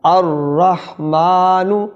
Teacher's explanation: را مشدد ہے، لہذا الف لام کا لام تعریف نہیں پڑھا جائے گا اور را مشدد پڑھا جائے گا، لام یہاں سائلنٹ ہو جائے گا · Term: حروف شمسیہ